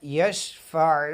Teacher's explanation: مَنْ ذَا الَّذِي يَشْفَعُ، بعض دوست یہاں پہ دیکھیں کہ عین ہے یشفع، عین کو خلق کے سینٹر والے حصے سے پڑھتے ہیں